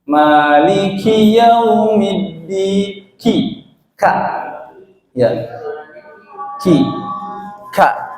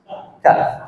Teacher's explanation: huruf K ini bukan seperti pengucapan huruf Indonesia K, ada angin yang keluar sedikit. K ya, karena dia itu termasuk huruf hamas.